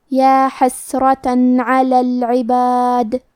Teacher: اظہار کا معنی ہے ظاہر کرنا، اور کیونکہ تنوین کی اصلیت نون ساکن ہے تو ہم یہاں تنوین ظاہر کریں گے اور اسے نون ساکن پڑھیں گے اور بغیر غنہ سے یہ حکم کو ادا کریں گے